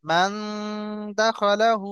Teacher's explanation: মান দাখালাহু, আর হাকে আমরা একালি পরিমাণ টান দেব। কারণ কি, উল্টা পেশ এসছে, উল্টা পেশ ও মাদ্দার সমতুল্য, আর ও মাদ্দাকে একালি পরিমাণ টান হয়।